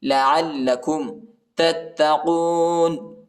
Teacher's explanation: بقوة واذكروا ما فيه لعلكم تتقون. عین کو لام کے ساتھ ملائیں گے، لام کو شدت کے ساتھ پڑھنا ہے